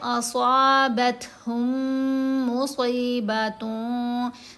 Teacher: کیسے کیا جائے گا؟ اب یہ والی جو ساکن میم ہے یہ مرج ہو جائے گی مشدد میم کے اندر، اس کو ہم نے علیحدہ سے نہیں پڑھنا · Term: میم ساکن کا ادغام